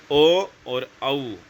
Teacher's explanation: कंठ से भी बोले जा रहे है और ओष से भी तो कंठ आपके ये हो जाएंगे ओ और औ ठीक है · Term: कंठ और ओस्ट